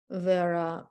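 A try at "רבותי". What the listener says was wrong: Put the I on the end of that, Varabotai.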